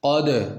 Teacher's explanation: قاف کو موٹا کرنا ہے، اس قاف کو بھی موٹا کرنا ہے